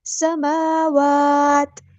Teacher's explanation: میم پہ کھڑا زبر ہے اور واو پہ بھی کھڑا زبر ہے، دونوں کو برابر ایک الف کے لمبا کرنا ہے